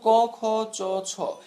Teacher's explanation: এগুলো তোমার গলার ঠিক গোড়ায় কোন ধরনের কম্পন তৈরি করবে না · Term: অঘোষ বর্ণ